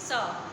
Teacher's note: जीभ दांतों से टच हो रही है, इसलिए इसे बोलेंगे दंत स